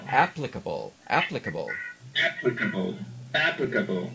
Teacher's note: two different articulators involved it's easier to see the physical process first the lips are making are working and then behind them the tongue comes into action